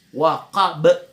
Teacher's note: Ba juga huruf qalqala. Jadi di sini ada 2 huruf qalqala, qaf dengan ba. Jadi kalau kita berhenti, qalqalanya kentara.